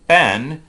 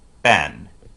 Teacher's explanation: voicing begins right about at the same time that the lips part